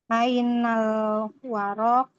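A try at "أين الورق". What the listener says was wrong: Ainal waraku. Dia nggak panjang.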